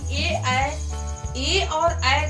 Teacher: ए और ऐ का उच्चारण कंठ और तालु को मिलाकर किया जाता है, यानी कि इसमें कंठ और तालु दोनों को मिलाकर हम बोलते हैं। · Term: कंठ तालु